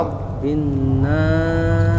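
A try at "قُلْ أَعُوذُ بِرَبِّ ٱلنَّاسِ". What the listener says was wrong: Masih belum perasaannya tuh, kurang ditahan lama lagi dikit lagi. Ya lumayan bagus, cuman nunnya kurang ditahan lebih lama.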